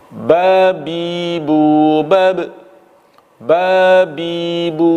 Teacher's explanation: Ketika kita melafalkan ba itu keluar dari al-jauf atau rongga mulut dan tenggorokan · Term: huruf mad